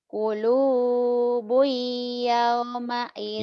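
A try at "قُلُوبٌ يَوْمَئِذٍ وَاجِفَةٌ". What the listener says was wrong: yao yao yao yao yao jangan yao yau yau jangan yao atuh teteh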